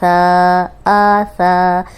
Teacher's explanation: تو یہ سا ہے، نرم حرف ہے، تو اوپر سامنے کے جو 2 دانت ہیں ان کے کنارے پہ زبان رکھیں گے، سیٹی کی آواز نہیں آئے گی